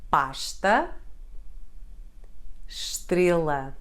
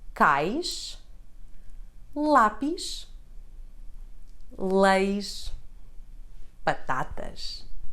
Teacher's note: The sound sh can occur in the middle or at the end of words.